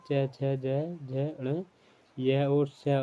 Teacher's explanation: ताल और जीभ के स्पर्श से बोले जाने वाले वर्ण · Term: तालाव्य